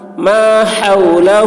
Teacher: ہا کی آواز حلق سے